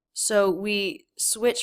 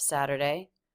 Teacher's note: we switch from the flap right into the schwa r unstressed syllable of Saturday so that front of the tongue will flap against the roof